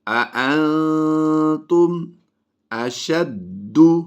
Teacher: دال حروف قلقلہ سے ہے اور جب بھی یہ مشدد ہوتے ہیں تو ہم ان میں قلقلہ کر کے پڑھتے ہیں۔